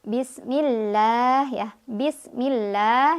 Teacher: Dimana untuk lam jalalah yang tarkik, lafaz Allah yang tarkik diucapkan dengan tipis dengan pangkal lidah yang datar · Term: lam jalalah tarkik